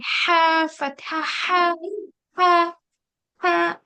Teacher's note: इसमें हमें हमारा जो मिडिल पार्ट है थ्रोट का, वहां से ये अदा होगा, और इसमें ऐसी आवाज आएगी, हा फतहा हा, हा हाँ, ऐसी होगी।